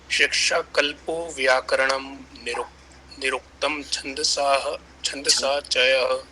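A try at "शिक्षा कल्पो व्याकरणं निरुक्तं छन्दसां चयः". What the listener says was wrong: छंदसाम है बेटा, विसर्ग लगाए ऊपर देखो। विसर्ग नहीं, ये अनुस्वार लगाए,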